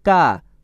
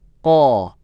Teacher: Saat mengucapkan huruf qaf, diusahakan tidak keluar hamas atau nafas ko, tapi ko, dan tebal, bukan ka, tapi ko.